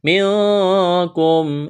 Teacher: منکم اخفا کریں گے، نون ساکن کے بعد کاف ہے۔